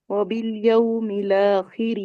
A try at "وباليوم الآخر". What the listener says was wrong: یس ٹھیک ہے. مل تشدید نہیں بنانی. میم زیر می، لام الف زبر لا. وبالیوم الاخر.